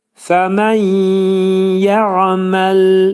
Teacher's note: Burada fəmən yə'məl deyəndə nun hərfi yəyə çevrildi. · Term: idğam mə'al gunnə